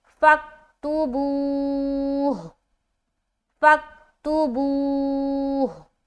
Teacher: تو اب جب یہاں پر پیش ہٹا کے سکون لگائیں گے اور اسٹاپ کریں گے تو ہا بھی ادا ہونا چاہیے، ہا کی حرکت ہٹی ہے، ہا نہیں ہٹا، ہا کو بھی ادا کریں گے، جیسے کہ اسٹاپ کریں گے فَاكْتُبُوهُ، فَاكْتُبُوهُ، سمجھ آ رہی؟